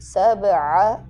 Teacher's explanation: باب حرف قلقلہ آ گیا، اس کو واضح کریں گے